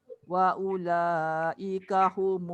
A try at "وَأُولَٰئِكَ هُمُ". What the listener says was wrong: Panjang sikit. Wa ula. Dia paling kurang 4 harakat.